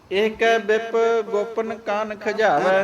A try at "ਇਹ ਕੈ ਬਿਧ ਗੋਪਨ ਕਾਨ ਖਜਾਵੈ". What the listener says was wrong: ਬਿਪ ਕਿਉਂ ਕਹਿੰਦੇ ਬਿਧ ਕਹਿ